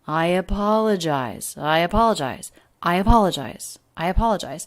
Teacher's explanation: syllable the third syllable is the most stressed i apologize but the intonation is smooth we don't have skips it scoops up the voice scoops up and then it comes back down i apologize i apologize i apologize i apologize linked together smoothly